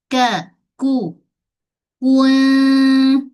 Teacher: Kalau kaf atas sikit lidah permulaan langit keras. Ka ku dia ada hams ada angin. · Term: huruf kaf